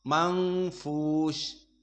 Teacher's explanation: Wa kadzalika al-manfush, semuanya muraqqaqah dan fihi ikhfa, nun sakinah bertemu dengan fa, manfush, maka harokatan mang dan juga makhrajnya dari khaisum, mang.